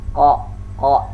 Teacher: dengan mengangkat pangkal lidah mengakibatkan huruf qa ini menjadi besar dan tidak membulatkan bibir di saat kita lafalkan huruf ko. · tidak ada udara atau nafas yang keluar saat kita melakukan huruf kok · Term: al-isti'la, jahar